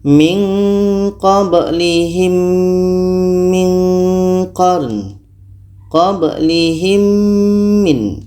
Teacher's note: Kita dengungkan mim mati bertemu mim. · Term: idgham syafawi